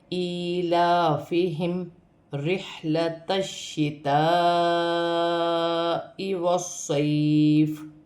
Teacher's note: تا کو شین کے ساتھ ملا کر پڑھا جائے گا، کیونکہ یہاں پر شین مشدد ہے، مشدد 2 مرتبہ پڑھا جاتا ہے، اور یہاں پر بڑی مد ہے، مد متصل، اسے 5 الف کی مقدار کھینچ کر پڑھا جاتا ہے، اور یہاں پر یا ساکن سے پہلے زبر ہے تو یہاں پر بھی یا لین بنتا ہے، اسے کھینچتے نہیں ہیں۔